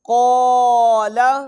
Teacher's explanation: قاف کو پر کیا، الف آٹومیٹک پر ہو گیا